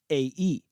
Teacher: The jaw no longer moves from the back to the front because both a and e are front vowels.